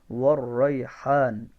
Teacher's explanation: ذو العصف, عصفی, تو فا اوپر کے دانت نچلے ہونٹ کا اندرونی کنارہ, نچلے ہونٹ کا جو اندرونی حصہ ہے وہاں سے فا ادا ہوتا ہے، والعصفی، ٹھیک ہے. والریحان، واو کے اندر ہونٹ گول ہوں گے اور را کو مشدد ہونے کی وجہ سے سختی سے پڑھیں گے